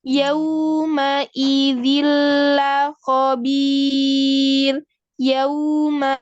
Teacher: Waw kan dengan memonyokkan bibir, maka bunyinya u. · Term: huruf lin